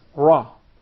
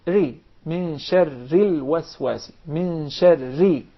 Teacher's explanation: Sometimes it will be pronounced very clearly, and sometimes the same letter will be pronounced with tafkhim, very heavy and deep, such as the ra with fatha, for instance, and sometimes the same letter will be pronounced with tarqiq, very soft and thin, such as if we pronounce the ra with kasra.